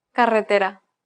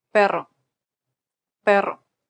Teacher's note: The double R here is a rolled R.